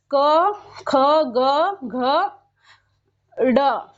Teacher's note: क वर्ग कहाँ से निकलता है, हमारे कंठ से बोला जाता है